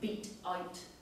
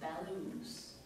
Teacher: we have a hard consonant T sound, beat out, which gives way to the long vowels of bellows